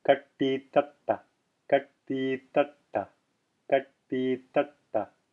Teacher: Notice how my tongue is curled back for the first ta, and then pushing forward again, touching the teeth for the second one, ta, and then again curled back for the last ta.